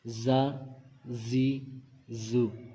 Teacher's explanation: زا کو سختی کے ساتھ پڑھتے ہیں، سیٹی کی آواز نکالیں گے. زا زی زو، یہاں پہ سیٹی کی آواز نکالیں گے.